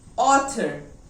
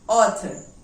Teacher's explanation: Here TH is coming in between the two vowels. So it is supposed to be voiced. But here it is voiceless.